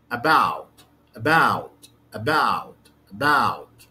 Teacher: the first syllable the first syllable is weak the second syllable have the stress